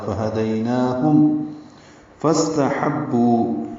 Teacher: فا کو استحبو کے سین سے ملائیں گے تو فس ہو جائے گا، سین ساکن پہ ہمس. تا کو جلدی سے پڑھیں گے، ہا وسط حلق سے ادا کرتے ہوئے با سے ملائیں گے، اور بو میں واو مدہ ہے، 2 حرکات لمبا ہے.